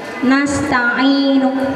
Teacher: Contohnya nasta'inu nunya diucapkan sepertiga aja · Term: wakaf raum